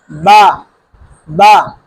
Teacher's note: دونوں ہونٹوں کے تر حصے سے ادا ہوتا ہے